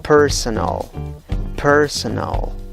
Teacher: también lo puedes pronunciar con 3 sílabas y tienes la vocal schwa en cada una de las 3 sílabas · La sílaba que lleva la fuerza de voz es la primera, contando de la izquierda a la derecha, como ves por el apóstrofe que está al costado de la letra P.